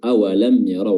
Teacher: mim sukun bertemu dengan ya, ya mimnya dibaca jelas izhar